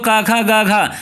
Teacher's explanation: आप जानते हो का खा गा घा, ये आपके कहाँ से बोले जा रहे हैं, कंठ से। का वाली लाइन कहाँ से बोली जाती है, कंठ से